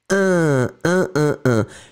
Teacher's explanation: it goes in the nose, un, you don't hear any N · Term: the nasal